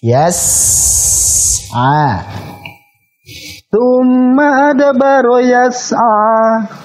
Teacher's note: Bukan yasa, jangan dipantulkan, tapi yas'a. Alirkan dulu.